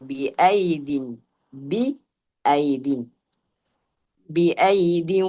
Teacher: നമ്മൾ രണ്ടാമത്തെ യാഇനെ ഉച്ചരിക്കാതെ ശേഷമുള്ള അക്ഷരമായ ദാലിലേക്ക് ചേർത്തു പറയുന്നു